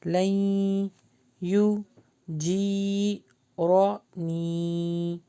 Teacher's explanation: یہاں پہ نون اسکپ ہوگا، لام جو ہے وہ یا سے ملے گا